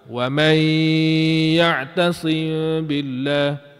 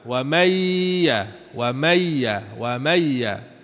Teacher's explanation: tak boleh nak baca masuk secara penuh tak boleh ha kena ambil juga nun tu separuh